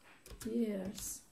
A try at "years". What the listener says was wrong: Again, you're saying years. An S instead of a Z. Years is, what's that mean? Years means años, and jeers means abuchea.